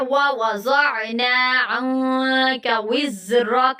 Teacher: نون ساکنہ کے فوراً بعد بڑی کاف آ گیا تو یہاں پہ ہم لوگ اخفا کریں گے